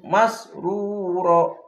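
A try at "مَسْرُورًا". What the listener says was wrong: ro panjang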